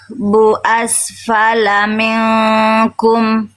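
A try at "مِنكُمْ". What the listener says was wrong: Jangan. Jadi jangan me jangan miring ke e. Vokal i-nya.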